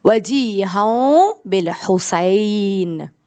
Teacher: آپ نے نون کے ساؤنڈ کو اسکپ کیا ہن میں سے, میم خود ہی وہاں لگایا اور پڑھا وجیہوں, تھوڑا سا دور رکھ کے نون اپنے لپس کو, وجیہوں بالحسین. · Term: اقلاب